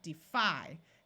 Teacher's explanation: when the syllable is accented so right here we have defi this syllable fi is accented so the Y has a long I sound